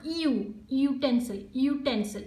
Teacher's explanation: it can begin with a consonant sound Y